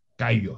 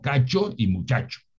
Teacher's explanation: la che nuestra es diferente, es una che más sonora, es una che adherente que decimos en fonética, pero es una che.